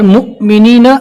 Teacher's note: یہاں پر مؤمنین یہاں پر جھٹکا دے کر پڑھیں گے، جزم والی حمزہ کو پہلے والے حرف سے ملا کر جھٹکا دیں گے